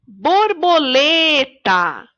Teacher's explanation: na palavra borboleta a sílaba mais forte é a sílaba lê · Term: sílaba tônica